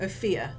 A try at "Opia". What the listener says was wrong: Opia. no Opia. No, there's no H. Because it's that or Opia, and I don't want to pronounce it Opia, so it's Opia.